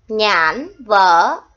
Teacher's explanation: tiếng nhãn có vần an, có âm n cuối. Nên khi các con đọc, các con nhớ đầu lưỡi của các con phải chạm răng trên.